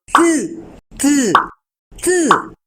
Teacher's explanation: colocamos la lengua en la parte superior de los dientes por el lado interno, o sea, atrás de los dientes superiores, y de una manera espontánea hacemos el sonido de la T.